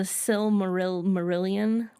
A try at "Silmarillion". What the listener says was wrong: I normally hear it pronounced without the first L. Like, even though it's there, like, I normally hear it's Silmarillion, but I don't know if that's correct. I just normally hear it that way.